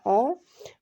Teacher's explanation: विवृत open, यानी कि मुख्य द्वार पूरा खुला रहता है जब, उसको हम बोलते हैं विवृत।